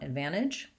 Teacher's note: You want advantage with a fast N or advantage with a nice aspirated light T.